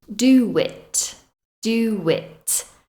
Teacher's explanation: a w or a y sound for example do it doit there is no W in the spelling here but you can hear a w sound between do and it